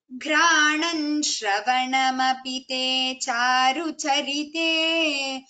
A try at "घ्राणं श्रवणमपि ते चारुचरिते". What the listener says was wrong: There is no nakara there. It is granam, makara only. When shakara comes, it is simple makara. Granam, shravanam.